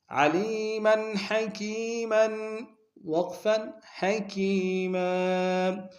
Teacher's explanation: وقت میں میم کی تنوین کو الف سے بدلیں گے۔ علیما حکیما وقفا حکیما ومن یکسب خطیئة، خا کو موٹا ادا کریں گے، خا کو یا کے سامنے لائیں گے، اور مدہ متصل ہے، کم سے کم 3 مقدار میں کھینچیں گے۔